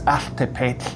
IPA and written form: aːɬˈtɛpɛːt͡ɬ (āltepētl)